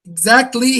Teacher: Here the second syllable is stressed.